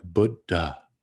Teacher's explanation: it's a short u with a d and then followed by an aspirated d written as d h and then a short a